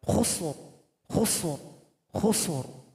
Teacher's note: Huruf ra yang rin itu kita sukunkan karena didahului oleh huruf sin yang sukun dan huruf kha yang dhammah, maka dibaca tebal.